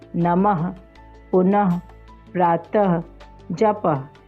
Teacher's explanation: विसर्ग, इसका उच्चारण ह की तरह होता है,